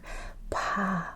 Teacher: It has air. It's a P with a lot of air.